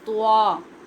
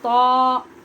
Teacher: تا ہونٹ گول نہیں ہوں گے